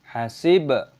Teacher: baknya berharokat sukun, kita baca qalqalah, kita pantulkan suaranya